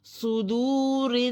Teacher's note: واو ساکن سے پہلے پیش ہے، ایک الف کے برابر کھینچیں گے، یہ واو مد ہے